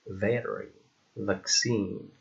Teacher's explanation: V, which is a voiced labiodental and fricative sound, like in very, vaccine.